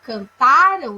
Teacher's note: quando eu digo cantaram, eu tenho aí a sílaba tônica é o tá, eu tenho uma paroxítona.